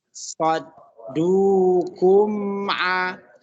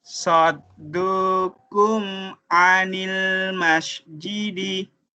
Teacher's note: bisa disambungkan suara mim mati ketemu dengan a.